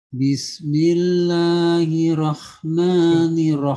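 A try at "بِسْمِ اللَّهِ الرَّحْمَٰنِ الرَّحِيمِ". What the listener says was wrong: Bismillahirrahmanirrahim. Belum sempurna, Pak. Bismillahirrahmanirrahim. Jangan kecepatan, Pak. Nirrahim.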